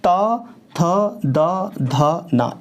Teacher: अच्छा, ये ता वर्ग जब बोलोगे तो आप ता थ द ध ना, इट मीन्स कि हम तीत का प्रयोग कर रहे हैं, दांतों का प्रयोग कर रहे हैं, इसलिए इसको दंत बोल देते हैं